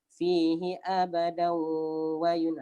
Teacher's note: Bila kita sambung fihi abadan wa yun, dia jadi dengung. Dia tak jadi mad iwad dah.